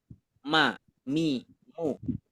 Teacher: huruf mim kan keluarnya dari dua bibir